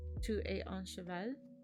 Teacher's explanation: And I'm using the same question phrasing we have in German, which is to put the verb at the beginning to start the sentence, but you can also in French state the sentence and you just add a tilt at the end and go up, and that makes it a question mark